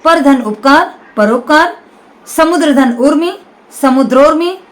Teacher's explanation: पर धन उपकार र का अ और यहां उपकार का उ दोनों मिलकर बनते हैं परोपकार · दूसरे शब्द में उगा। छोटा ऊ या बड़ा ऊ दोनों मिलकर ओ में कन्वर्ट हो जाएगा। ओ में बदल जाता है। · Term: गुण संधि